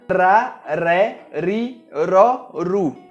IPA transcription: ɾ